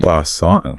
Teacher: He pronounces it with the perfect original French inflection. You know, the soft N, the stress at the very end.